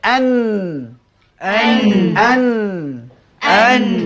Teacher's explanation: Di antara sifatnya lagi istifal yakni berbunyi tipis. Di antara sifatnya ada bunyi dengung kerana ghunnah.